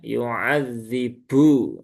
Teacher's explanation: Jadi bnya itu ada ikutan aliran udara yang keluar ketika mengucapkan